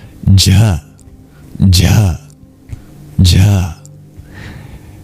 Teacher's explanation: Just like the regular palatal of J, but you add breath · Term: aspirated voiced palatal